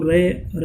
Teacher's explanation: वह ध्वनि जिसका उच्चारण करते समय जीभ गोल होती है तथा कंपन करती है, तो रे कैसा है जो लुंठित होता है, प्रकंपित कहलाता है।